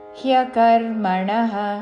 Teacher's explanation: హ కి య వత్తు చక్కగా వినపడాలి